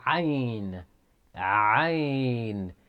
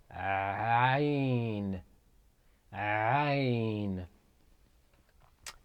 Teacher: Ayn is pronounced from the middle of the throat.